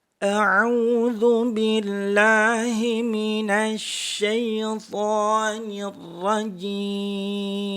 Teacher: pada kalimat jim itu pakai tengah-tengah lidah. Jim, jangan pakai ujung.